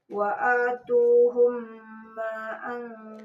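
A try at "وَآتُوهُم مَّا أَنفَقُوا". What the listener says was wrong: maknya kurang panjang ma'ang paku 6 harokat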